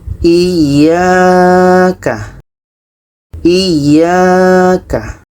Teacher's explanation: Ya ini dibaca panjang karena ada alif sebelumnya baris atas.